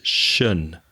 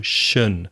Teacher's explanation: The pronunciation is shun. So like an sh sound, sh, and the schwa sound, and the final n.